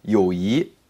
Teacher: in the Beijing dialect, they'll say 友谊. They'll say it in the second tone.